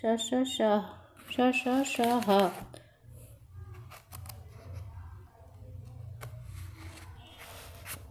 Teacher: ऊष्म व्यंजनों का उच्चारण एक प्रकार की रगड़ या घर्षण से उत्पन्न ऊष्म वायु से होता है